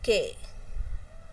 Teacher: So, there is no using of teeth ridge and tongue. So, it is voiceless velar plosive. · in K there is no vibration of the vocal cords. But, here the air comes from the soft palate.